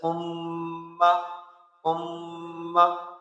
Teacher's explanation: نون مشدد اور میم مشدد میں ہمیشہ گنہ ہوتا ہے۔ گنہ کا معنی ہے ناک میں آواز لے جانا، اور گننے کی مقدار ایک الف کے برابر ہوتی ہے۔